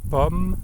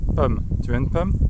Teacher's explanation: So it's like a case of vowel fronting.